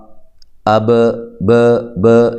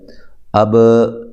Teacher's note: آخر میں جو میری آواز جب ختم ہوتی ہے اس وقت آپ کو با کی آواز ہلتی ہوئی محسوس ہو رہی ہے